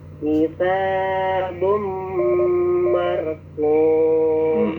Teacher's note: Lamaan dikit dengungnya kitabum marqum. Karena idgham digunakan tanwin ketemu dengan mim.